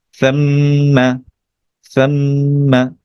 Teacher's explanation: তাহলে এই যে মিমটাকে যে ধরবে এটা গুণনা করা হয়, আমরা আগে আলোচনা করেছিলাম মিমের উপরে তাসদিদ এবং নুনের উপরে যদি তাসদিদ বা এই ডাব্লিউ সাইনটা থাকে, এটাকে ওয়াজিব গুণনা বলা হয়। কিছুক্ষণ নেজেল সাউন্ড করতে হবে, নাকে কিছুক্ষণ ধরতে হবে। তাহলে কি হবে, সাম, তারপর মিমের সাথে যুক্ত করা মা, সাম্মা সাম্মা।